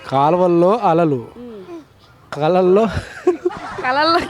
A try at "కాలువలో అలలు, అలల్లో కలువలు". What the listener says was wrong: కలల్లో కాదండి, అలల్లో కలువలు. కాలవల్లో అనకూడదు, కాలవలో.